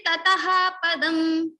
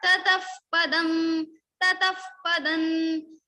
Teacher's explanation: So Tataha, Visarga is followed by pa, so we will say Tataf. Fa sound will come in the place of Visarga. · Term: Upadmaniya